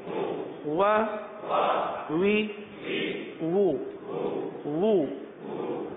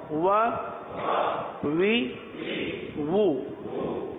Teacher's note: واؤ بھی ہونٹوں کو گول کر کے ہی ادا کیا جاتا ہے